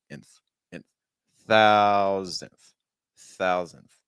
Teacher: So that means our first syllable needs to be higher in pitch, thou, thou, and your second syllable needs to be lower pitch